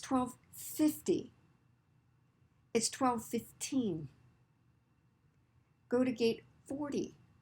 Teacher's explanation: when I'm saying the 10 numbers, I am stressing the very first part of that word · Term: stress the first syllable